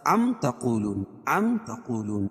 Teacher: ام تقولون ان ابراہیم واسماعیل واسحاق ویعقوب والاسباط، میم ساکن کے بعد میم اور با کے علاوہ کوئی اور حرف آئے تو اظہار شفوی ہوگا، یعنی اس کو ظاہر کر کے پڑھیں گے، اس میں غنہ اور اخفا نہیں ہوگا